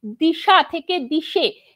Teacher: সামনের ই স্বরধ্বনির প্রভাবে পরের আ স্বরধ্বনি চেঞ্জ হচ্ছে, চেঞ্জ হয়ে এ স্বরধ্বনিতে পরিণত হচ্ছে। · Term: প্রগত স্বরসঙ্গতি